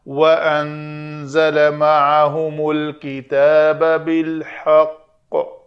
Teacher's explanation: قاف ساکن کیا ہم نے خود وقف کے لیے تو قلقلہ کریں گے، واو کلی شفتین گول۔